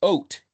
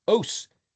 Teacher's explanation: It's pronounced oat if you give the phonetic T, tav, but the Ashkenazi use S, os, S for a tav. And some people use TH for tav.